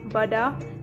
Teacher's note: pada konsonan B pita suara bergetar sedangkan pada konsonan Pevita suara tidak bergetar misalnya pada kata badak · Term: konsonan hambat bilabial bersuara